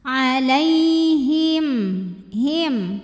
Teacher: Maka mim sukun kita bunyikan dengan jelas. Jadi kalau asalnya bunyi mim sukun M, maka tetap M, tidak ditahan. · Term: izhar syafawi